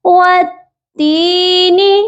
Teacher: والتین والزیتون، واو تا زبر وت، تا یا زیر تی، وتی، تا کے ساتھ یائے مدہ ہے، کیونکہ یا ساکن سے پہلے زیر ہو تو وہ یا یائے مدہ کہلاتی ہے، اسی لیے تا کو ہم نے یا کے ساتھ کھینچ کر پڑھنا ہے 1 الف کے برابر